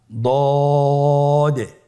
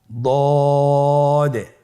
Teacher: জিহ্বার গোড়ার কিনারা সামনের উপরের দুই দাঁতের গোড়ার সঙ্গে লাগিয়ে উচ্চারিত হয়